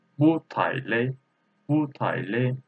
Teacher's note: Its original tone is photo, but after bu there is a photon character. This bu reading like second tone.